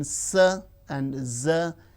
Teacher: alveolar, the teeth ridge and the blade of the tongue